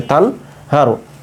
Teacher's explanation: যেহেতু হা হচ্ছে ইজহারে হরফ তাই আমরা স্পষ্ট করে পড়বো তান পড়বো তানুন জবর তান তান ঠিক থাকবে কোন পরিবর্তন হবে